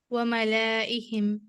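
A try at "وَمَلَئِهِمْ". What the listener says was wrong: نو, why do you pull your لام؟ نہیں, again try again, look closely. Ma is one, the la is one, and Hamza is one. That's all. Finish. Again, you're putting your lam, okay? मैं जितना पुल कर रहे हो उतना ही ला पुल करो, उतना ही हमजा पुल करो. That's all. Finish. Why do you say malaihim? La. Mala. Ma la. Ma la.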